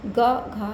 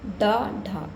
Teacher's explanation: जब हम डा और ढा बोलते हैं तो हमारी जिह्वा मुड़कर ऊपर टच होती है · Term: मूर्धन्य व्यंजन